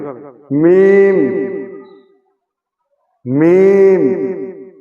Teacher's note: দুই ঠোটের শুকনা অংশ